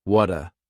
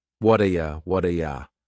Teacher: That T at the end of the word what is going to change to a D sound. This is really typical of American English, where a T that's surrounded by vowel sounds is going to change to a D. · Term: flapped T